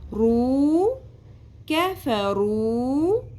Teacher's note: رو ایک الف کے برابر کھینچتے ہیں پیش کو